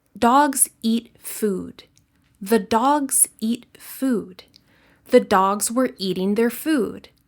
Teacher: In each sentence, we keep the same timing from one stressed syllable to the next. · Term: sentence stress